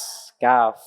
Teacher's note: Pangkal lidah setelah qaf ya. Menyentuh apa? Langit-langit lunak dan juga keras.